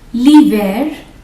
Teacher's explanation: in here we will not pronounce the H